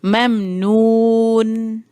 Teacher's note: آپ دیکھیں کہ نون پہ آواز ہلکی سی دیر کے لیے جو ہے وہ رہی ہے، اس کو میں نے فوراً سے ختم نہیں کر دیا.